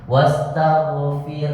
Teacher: Itu setelah baca fir harus ada hembusan huruf ha, karena ada huruf ha yang sukun bersamaan dengan huruf ra yang disukunkan karena waqaf.